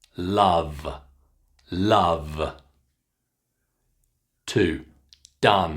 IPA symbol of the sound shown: ʌ